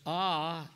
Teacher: ah is a plus back unrounded vowel